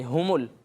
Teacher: ہا حمزہ جیسا نہیں لگنا چاہیے